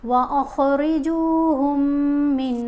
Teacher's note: حیث ثقفتموہم، خا کو بھی یہاں پر موٹا پڑھیں گے اور یہاں میم کا ادغام ہے، میم کو یہ جو ساکن میم ہے یہ خاموش ہو جائے گی، مشدد میم پڑھی جائے گی، غنہ کرتے ہوئے ہا کو میم سے ملائیں گے